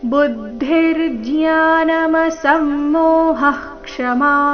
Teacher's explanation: ವಿಸರ್ಗದ ನಂತರ ಕ್ಷ ಬಂದ್ರೆ ವಿಸರ್ಗದ ಉಚ್ಚಾರಣೆ ಹ ರೀತಿ ಆಗಬೇಕು ಅಂತ ನಿಯಮ ಇದೆ